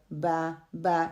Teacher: Close of the both lips, اس کو close کریں گے تو غنہ صحیح طریقے سے ادا ہوگا. اسی طرح با ہے closing and opening of the lips, کہ میں اس کو کلوز کروں گی یا میں اوپن کروں گی.